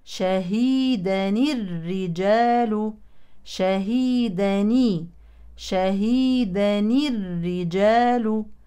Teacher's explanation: ستلتقي نون التنوين الساكنه بالراء الساكنه من المشدده في كلمه الرجال فتحرك نون التنوين الساكنه بالكسر للتخلص من التقاء الساكنين